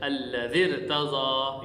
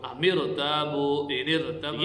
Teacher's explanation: را ساکن سے پہلے اگر زیر دوسرے کلمہ میں آ گئی ہے تو اس را کو بھی ہم موٹا پڑھیں گے